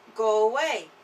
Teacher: Número 1. En tu boca está cerca del sonido de la W, al final de la palabra go, así que se pronuncia como go away y suena como una palabra, no como dos. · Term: sonido de vinculación